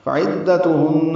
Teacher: عین کو دال سے ملانا ہے، دال تا جلدی پڑھنی ہے. ہن میں غنہ کریں گے.